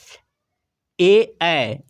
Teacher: ए ऐ इसका उच्चारण कंठ तालु से होता है। कंठ तालव्य वर्ण इसलिए कहा जाता है।